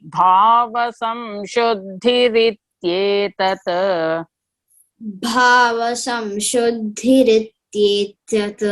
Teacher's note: Here bhava, BH, that is Mahaprana, and then Shuddhi is DH. The second DH is Mahaprana.